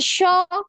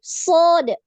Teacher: Ini jauh ya, makhrajnya jauh. Shin itu di tengah lidah, sedangkan so ini di ujung lidah